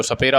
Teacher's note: सपेरा वाला जो स है वो दंत वर्ण बोला जाता है